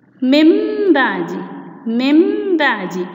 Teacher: نحن لا ننطق النون الساكنة بل نقلبها إلى ميما مع الغنة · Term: إقلاب